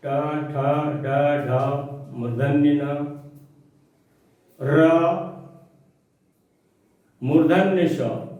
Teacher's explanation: इतने वर्णों का उच्चारण स्थान मूर्धा है, अर्थात ये सभी वर्ण मूर्धा से उच्चरित होते हैं। मूर्धा तालु का अग्रभाग जो है वो मूर्धा कहलाता है, इसलिए ये सभी वर्ण मूर्धा से उच्चरित होते हैं, इसलिए इस स को मूर्धन्य ष कहा जाता है।